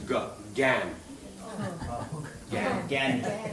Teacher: In Bengali, they will not do the ya even. It becomes ga, gan.